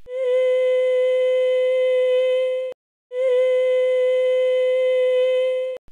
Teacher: I'm still hearing air leak at this high pitch so I would again expect to see a black hole on